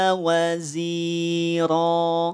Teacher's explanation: Ro panjang 2 harokat, tidak dibaca ron.